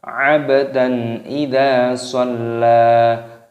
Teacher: Abdan baknya berharokat sukun, dipantulkan suaranya qalqalah. Lalu di sini ada fathah tanwin yang bertemu dengan huruf alif, hukumnya dibaca idhar halqi, dibaca jelas.